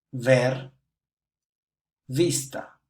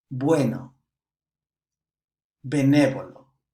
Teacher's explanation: b and ve are pronounced identically in many regions of Latin America but also in some other regions that difference may be somewhat